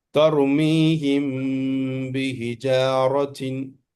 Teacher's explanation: جب میم ساکن اس کے بعد با آ گیا ہے تو میم کی آواز گنہ کے ساتھ تھوڑا چھپا کے پڑھنا ہے. میں پڑھا کے سناتا ہوں، آپ کو سن لینا ہے. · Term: اخفاء شفوی